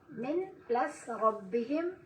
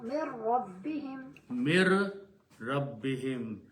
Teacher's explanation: the sound of noon completely goes away. And ra should be pronounced 2 times. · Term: Noon before ra